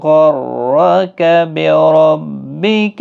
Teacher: غائن حروف مستعلیہ کا حرف ہے، را بھی پر پڑھا جائے گا، دونوں پر پڑھے جائیں گے۔